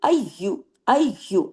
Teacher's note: अयु सख्ती से जुड़ेगा। अयु या पे तशदी है ना